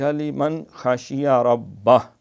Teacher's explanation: نون ساکن کے بعد خا حروف حلقی کا ہے تو یہاں پھر اظہار ہوگا